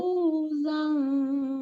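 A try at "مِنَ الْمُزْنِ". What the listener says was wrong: No. Masih kurang tepat. Lidahnya nggak keluar itu. Ini huruf zal. Minal muzni. Muzni-nya nunnya pendek.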